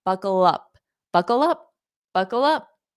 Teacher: So notice how I hold out that dark L, buckle up, and then I pronounce the up, buckle up, buckle up, buckle up.